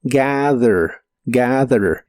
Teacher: la th se pronuncia como una d vibrante y la a se pronuncia con la combinación de los sonidos e a